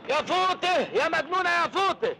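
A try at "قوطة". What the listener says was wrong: فوطه ايه يا ابني؟ اسمها قوطه مش فوطه. لكن هنا اسمها قوطه.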